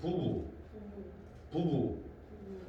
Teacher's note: 두 번째 부 할 때는 약간 떨리지 않냐?